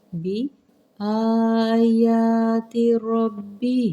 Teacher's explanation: ہاں کے نیچے کھڑی زیر ہے، اسے حرکات کو لمبا کیجیے گا، 2 حرکات، 1 الف کے مقدار